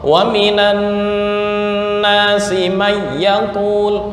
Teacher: idgham mutlak ya, artinya hanya dibaca langsung langsung tanpa dengung